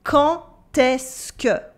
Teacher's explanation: Here we have a silent D at the end of quand, but when we do la liaison, it becomes a T sound, a T sound.